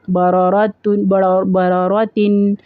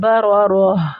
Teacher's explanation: آپ تا کو حذف کر کے وہاں پہ ہا کے اوپر وقف کریں گے، ہا والی آواز نکالیں گے، ٹھیک ہے. باروراتن جب ملا کے پڑھیں گے تو وہ تا پڑھا جائے گا باروراتن، اور جب ہم اس کے اوپر وقف کریں گے تو پھر تا نہیں پڑھیں گے، اس کو ہا پڑھیں گے باروراتن بارورا.